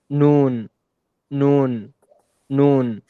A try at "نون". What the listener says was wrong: Okay, it's still both of you a little bit from the nose, but inshallah we'll get there.